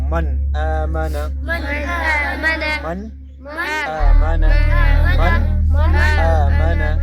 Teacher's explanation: د نون به خپل اواز ښکاره کوو به اظهار